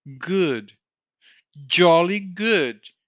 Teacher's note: it sounds like he's raising all the back vowels. R goes to O, and goes to U.